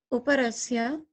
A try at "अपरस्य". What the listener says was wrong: Aparasya, not uparasya. Aparasya.